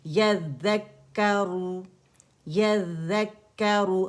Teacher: جب کاف سکون سے ملے گا یذک، اب یہاں پہ آپ نے ہمس نہیں کرنا کاف سکون پر کیونکہ مشدد ہے تو اس میں ہمس واضح نہیں ہوگا، ٹھیک ہے. اور نہ ذال میں بزنگ ساؤنڈ ہے نہ کاف میں ہمس واضح ہوگا